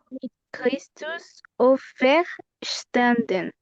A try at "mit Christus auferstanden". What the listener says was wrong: Good, muy bien.